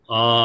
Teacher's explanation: రెండు మాత్ర కాలంలో రెండు చిటికన వేసే సమయంలో ఆ అని అంటాం అంతే ఆ ఎక్కువ తీసుకోవడానికి వీలు లేదు. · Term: దీర్ఘం